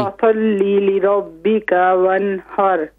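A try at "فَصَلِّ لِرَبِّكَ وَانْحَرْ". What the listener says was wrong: काफ को खींचे नहीं, ली रब्बिका वन्हर,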